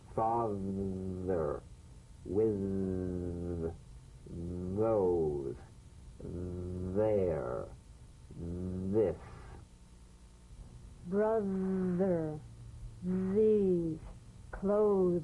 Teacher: flip the rim of the tongue between the teeth and sing feeling a buzz or vibration · you've got to let the tip of the tongue stick outside the teeth and vibrate · The voiced tongue point to teeth fricative TH. The vibrant sound of the voiced TH has a quality much like that of the V.